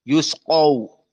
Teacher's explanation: perhatian sin dalam keadaan hams